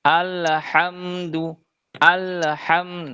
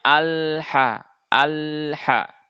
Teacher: huruf lam itu dia punya sifat namanya tawasut atau bainiah yang di mana suaranya itu harus mengalir. Walaupun mengalirnya tidak terlalu banyak seperti yang rakhawah.